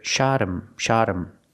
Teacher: because the word him is not a stressed word, the H becomes silent.